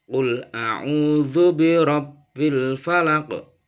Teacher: ada huruf ba di tasydid, maka bacanya harus double atau ditekan dulu. Qul a'udzu birabbil falaq.